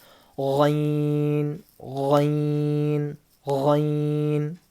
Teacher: غین، منہ گول کر کے غین. اور اس کو پڑھتے وقت تھوڑی غرارے کی آواز آتی ہے، غرغرہ کرتے نا اپن، غرارہ، غارغل کی آواز آتی ہے.